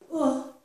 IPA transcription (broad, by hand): ʊ